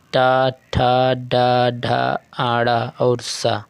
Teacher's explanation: मूर्धन्य व्यंजन ऐसे व्यंजन होते हैं जो जिह्वा द्वारा वत्सर्य, कटक और कठोर तालु के बीच उच्चारित होते हैं।